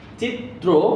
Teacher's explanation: এই ত এর নিচে যে রফলা আছে শুধুমাত্র এই কারণে এই ত দুইবার উচ্চারিত হয়। · আবার ত্র, চিত্র একটা ও ধ্বনিও চলে আসে, অর্থাৎ অ যেটা ছিল সেটা ও এর মতো উচ্চারিত হয় বলে ওকারটা এখানে বসাতে হয়েছে।